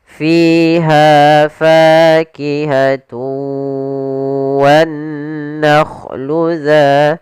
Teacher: Kita panjangkan dua harakat f-nya. Kemudian pada lafal ha ada fathah bertemu alif maka juga mad thabi'i panjangnya dua harakat. Kemudian pada lafal fa ini juga ada mad thabi'i yaitu adanya fathah bertemu dengan alif.